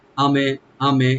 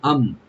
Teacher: এখানে আম মিম সাকিন, এখানে আমরা শুধু সাকিন করব, এখানে কলকলা হবে না। আমে আমে এরকম না, আম ধরে রাখতে হবে।